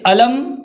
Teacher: میم ساکن کو بالکل مکمل طور پر ظاہر کر کے بغیر کسی غنہ کے پڑھیں گے۔ ناک میں بالکل بھی آواز نہیں جائے گی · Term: اظہار